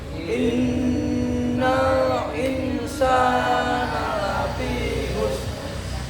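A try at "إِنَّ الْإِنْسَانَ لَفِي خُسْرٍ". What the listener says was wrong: Yang keduanya kurang panjang.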